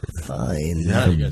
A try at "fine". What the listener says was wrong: There's no Y in that word. Fine.